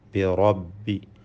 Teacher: അഊദു ബിറബ്ബി, റാഇൻ്റെ തഫ്ഖീം സൂക്ഷിക്കണം. റാഇനെ തഫ്ഖീം ചെയ്ത് പെരുപ്പിച്ച് സ്വരഭാരത്തോടെ ഉച്ചരിക്കേണ്ടതാണ്